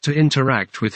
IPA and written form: tu ɪntəˈrækt wɪð (To interact with)